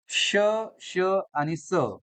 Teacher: उष्णता निर्माण होते म्हणून यांना काय म्हणतात उष्मे असं म्हणतात आणि तेच हवेच घर्षण होतं म्हणून यांना काय म्हणतात घर्षक व्यंजने असेही म्हणतात